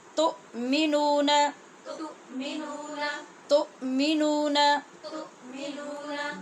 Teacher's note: اس حمزہ کا جھٹکا یاد رکھنا ہے. آواز بالکل رکے گی.